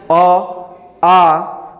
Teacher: ये अ और आ का जो उच्चारण स्थान होता है ये कंठ होता है। यानी कि जब हम उच्चारण करते हैं अ का, तो यहाँ ये आपकी होगी क्या, कंठ ध्वनि।